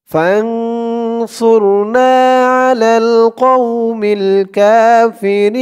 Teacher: থামার কারণে জেরের পরে ইয়াসাকিন একালিফ টানটা তিন আলিফ টান হয়ে গেছে মধ্যে আরজি